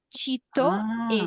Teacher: in Brazilian Portuguese, I think mainly we have the first T would be ch